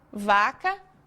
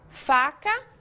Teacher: nós fazemos exatamente o mesmo movimento e a única diferença é que o som sai com voz e sem voz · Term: sons com voz